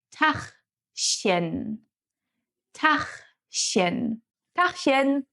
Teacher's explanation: The CH letter combination is pronounced in two different ways. We got the ach sound, which is produced here in the back of your throat